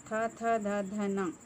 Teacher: వీటిని దంత్యాలు అంటారు అంటే దంతాల నుండి పుట్టేవి